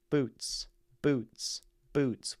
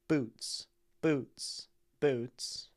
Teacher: We have this plosive at the beginning, which really pops out of the mouth.